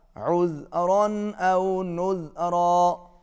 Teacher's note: تنوین کے بعد حمزہ ہے، اظہار ہوگا